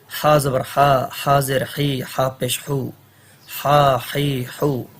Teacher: ہا گلے کے درمیان صدا ہوتا ہے